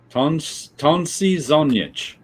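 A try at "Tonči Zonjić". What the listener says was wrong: Tonchi Zonjic. He has diacritics in the C, and that's what which you can't be reproduced in English language keyboards.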